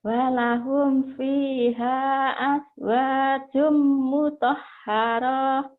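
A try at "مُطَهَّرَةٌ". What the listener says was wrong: Mutahharah. Bukan nggak jadi panjang. Mutahharah. Terus mutahharatu Rohnya pendek. Rohnya pendek. Mutahharatu. Jangan ditekan.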